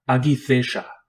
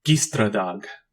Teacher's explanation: It is a voiced velar stop, pronounced like the G in gift.